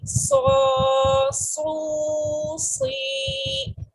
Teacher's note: صاد کھڑا زبر سو، صاد الٹا پیش سو، صاد کھڑی زیر سی، سو سو سی. بولڈ اینڈ وسلنگ لیٹر ہے، یہ اس میں وسل بھی ہوتی ہے اور یہ بولڈ ریڈ ہوتا ہے